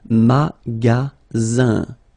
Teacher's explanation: you've got only one S between two vowels. Then you get the sound Z, alright? And then the ending here is IN, so it's nasal, it goes in your nose, and it's un.